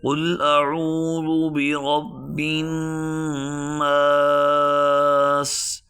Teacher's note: اور دوسری بات یہ ہے کہ اس کے اوپر تشدید ہے، اور تشدید کی وجہ سے نون جب مشدد ہوتا ہے تو اس پر غنہ آتا ہے، تو ہم اس کو غنہ کے ساتھ ایک الف کی مقدار اس نون کو کھینچ کر پڑھیں گے